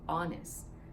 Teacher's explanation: a consonant letter H because it doesn't make the H sound sometimes H does make but sometimes it's silent and in this case for honest it's silent